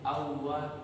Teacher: Begitu juga kalau misalnya waw di sini toh tidak dibaca lagi an wa, tapi awwa